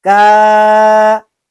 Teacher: Nah, di sini sudah kita lihat ada alif dan sebelumnya ada huruf kaf yang berbaris fathah. Maka cara membacanya yaitu mad alif yang panjang bacaannya 1 alif atau 2 harkat